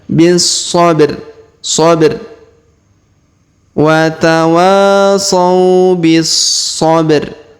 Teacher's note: Huruf ba kita pantulkan ya atau kita qalqalahkan.